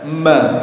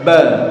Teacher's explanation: Kalau mim itu ada sifat gunnahnya, ba tidak ada. Ba ada qalqalahnya sementara mim tidak ada.